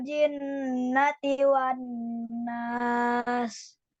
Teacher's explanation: Jadi kalau nun sama mim ada tasdidnya seperti itu harus ditahan 2 ketuk atau 2 harokat ya.